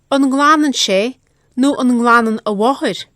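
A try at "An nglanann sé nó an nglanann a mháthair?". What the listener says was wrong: A slight vowel I hear intruding there between ng and l. Nglanan.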